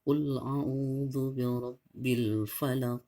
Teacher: Jadi kalau huruf Qaf itu di tenggorokan kita bagian dalam, dia Q. Jadi jangan bacanya kul ya.